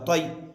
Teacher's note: कैसे करेंगे, देखिए, तो या ज़बर तय, यहाँ पर याए लीन होगा इसलिए कि याए साकिन से पहले ज़बर है। याए लीन को नरम आवाज़ के साथ जल्द पढ़ें, मारूफ पढ़ें, मजहूल आवाज़ से बचें।